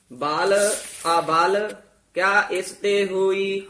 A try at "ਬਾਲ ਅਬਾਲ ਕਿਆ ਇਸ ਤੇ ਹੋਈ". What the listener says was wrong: ਹਾਂ, ਅਬਲ ਨਹੀਂ ਕਹਿਣਾ, ਇਸ ਨੂੰ ਅਬਾਲ ਉਚਾਰਨ ਕਰਨਾ ਹੈ। ਬਾਲ ਅਬਾਲ ਕਿਆ ਇਸ ਤੇ ਹੋਈ।